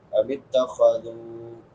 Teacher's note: دال کے بعد واو مدہ ہے، الف برابر لمبا